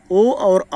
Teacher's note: ओ और औ का हो गया कंठ ओष्ठम, कंठ ओष्ठ